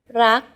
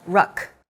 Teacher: all final consonants in thai are unreleased